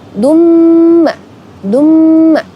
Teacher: karena ada tanwin bertemu dengan huruf mim maka dibaca dengung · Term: idghom bighunnah